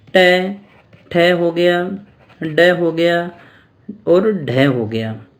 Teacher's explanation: ड और ढ को अपने कहाँ से बोलते हैं, मूर्धा से बोलते हैं। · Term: मूर्धन्य